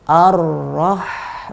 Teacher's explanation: Bunyi ha yang sukun, ketika dia sukun dia punya aliran yang paling panjang.